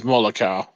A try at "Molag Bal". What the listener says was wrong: Molag Bal with a B. Molag Bal. Bal.